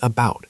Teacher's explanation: really try to make the first part sound like uh instead of A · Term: schwa